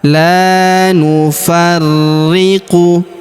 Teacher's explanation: huruf ri kita tahan dan tekan karena terdapat tanda tasydid di atasnya.